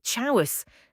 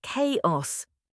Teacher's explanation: The ch makes a k sound because it's Greek.